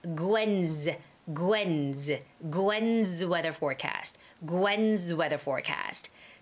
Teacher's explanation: n is a voiced sound voiced sound means gwen gwen and after that n sound when s comes it's got to be the z sound so it's gwenz gwen's gwen's weather forecast gwen's weather forecast so